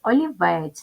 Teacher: голосних звуки тому три склади познача о лівець ставимо наголос олівець наголос паде на третій склад